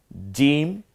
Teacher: জিম জিহ্বার মাঝখান ওই বরাবর তালু